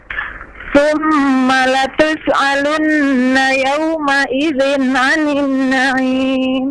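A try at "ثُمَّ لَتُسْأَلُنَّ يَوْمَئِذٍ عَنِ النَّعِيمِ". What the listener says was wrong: Nah, sin jangan dipantulkan soalnya. Jangan latus alu, nafasnya dialirkan langsung masuk huruf mikronya. Latus alu.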